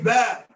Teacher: I want to reiterate, like we did in the first class. The ba comes from the two lips. Pressed together. And then air is forced between them. But those two lips, when you say ba, they're not folded.